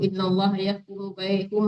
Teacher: Humnya itu jangan tertahan gitu. Soalnya nggak dengung di situ ya.